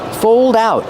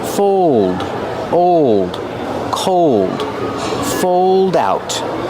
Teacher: Use a long O like old and cold plus a dark L.